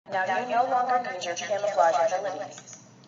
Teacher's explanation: 대기음이 없기 때문에 유성음적인 요소가 강화돼서 camouflage에 가까운 발음이 되는 것을 알 수 있습니다